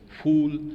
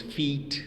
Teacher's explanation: there is the rounding of lips, but for instance, feet, there is the spreading of lips